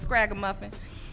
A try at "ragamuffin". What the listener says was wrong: You said scraga muffin.